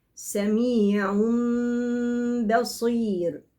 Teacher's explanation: ثم أطلع بحرف الباء بقوة، حرف باء شديد